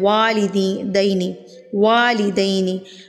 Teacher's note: तो आपने वाव को बिल्कुल होंठों की गुलाई से अदा करना है।